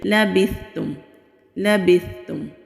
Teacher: मीम की आवाज़ clear आनी चाहिए, यानी कि मीम पर हमारे होंठ اچھی طرح سے بند ہونے چاہیے، تو پھر لام کو ادا کریں گے۔ لام کو جلدی پڑھیں گے، لابستم نہیں کریں گے، اگر لا کریں گے تو یہ غلطی ہو جائے گی، لبستم لبستم۔